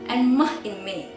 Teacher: forming a constriction between the lower lip and the upper lip